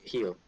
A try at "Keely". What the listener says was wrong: Keely. I only heard Keel. I'm like, you're missing the eye. You're so close.